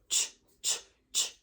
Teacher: using the correct tongue placement of the T sound, t, but just rounding our lips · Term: spray bottle sound